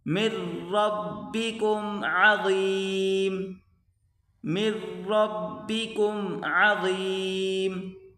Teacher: میم کو را کے ساتھ ملا کر پڑھیں گے، من نہیں بلکہ مر، یہ آگے نون نہیں پڑھا جائے گا، من ربکم عظیم، من ربکم عظیم.